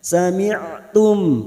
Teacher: ain sukun yang memiliki sifat tawasud dan jahar bunyinya sami'tum.